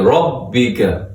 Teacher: را کے اوپر زبر ہے اور اس کو منہ بھر کے موٹا کر کے پڑھیں گے